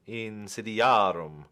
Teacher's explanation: This is accented on the penultima because the A is long.